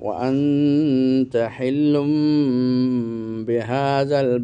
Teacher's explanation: নুন সাকিন অথবা তানবিনকে মিম দ্বারা পরিবর্তন করে পড়েছেন। নুন সাকিনকে পড়াই হচ্ছে কিন্তু মিম দিয়ে পরিবর্তন করে। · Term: ইকলাব